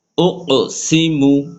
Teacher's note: মিম পেশ মু, ঠোঁট গোল